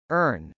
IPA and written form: ˈɝn (earn)